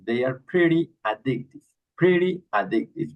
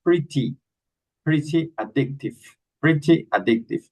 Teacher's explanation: They pronounce the T, the double T like an R.